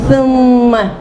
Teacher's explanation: دیکھو زبان باہر نکالی، ثم. ثم زبان نکالے بغیر نہیں نکلے گا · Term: ثا